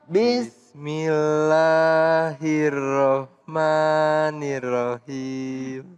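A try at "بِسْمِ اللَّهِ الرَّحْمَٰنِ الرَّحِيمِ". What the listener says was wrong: Jangan him, jangan pakai ha. bukan pakai ha, tapi pakai ha. Him gitu. Saya buka karena biar ngelihat mulutnya ya. Mohon maaf pemirsa, ini saya apa namanya untuk nyontohin hurufnya, ya kan? Bismillahirrahmanirrahim.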